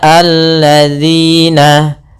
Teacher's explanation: huruf zal diganti dengan huruf zai. Ini kesalahan yang sering terjadi.